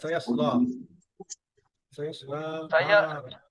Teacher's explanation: এই সায়াসলা কিন্তু سيصلى এক আলিফ টান হবে।